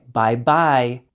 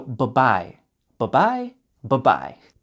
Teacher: But kids tend to pronounce the word very correctly to over pronounce it like bye-bye. For adults, for it to sound natural, only pronounce the B in the first bye.